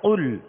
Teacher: قاف 2 نقطے والا ہے، حروف مستعلیہ میں سے ہے، لہذا اس کو پر یعنی موٹا پڑھیں گے. اگر اس قاف کو باریک کر دیں گے تو معنی بھی بدل جائیں گے، اور باریک کریں گے تو یہ قاف ختم ہو جائے گا.